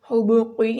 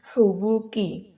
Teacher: کاف ڈنڈے والا کاف ہے، یہاں پر اس کو باریک پڑھا جاتا ہے، یہاں پر دو نقطوں والا قاف نہیں ہے، اس کو حبوقی نہیں پڑھنا، یہ ہے حبوکی، ٹھیک ہے.